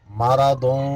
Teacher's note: فی یا مد ہے، قلو واو مد ہے، بہم میم مشدد میں غنہ ہوگا، مرضوں یہاں نون تنوین کے بعد آگے حروف اخفا میں سے فا آ گیا، اخفا ہوگا